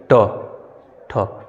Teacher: आपकी जिह्वा जो है ऐठ जाएगी, ट, ठ, ऐसे ऐठ जाएगी। त बोलेंगे तो आपको दांत जो जिह्वा आपकी दांत को स्पर्श करेगी।